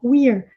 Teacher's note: É só pronunciar esse E com som de I, não pronunciar o último E, e fazer esse som de R enrolado do inglês no final